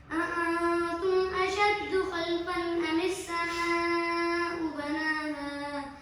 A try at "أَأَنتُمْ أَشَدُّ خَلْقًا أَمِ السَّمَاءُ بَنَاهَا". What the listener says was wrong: Speed تیز ہے، speed تیز ہے.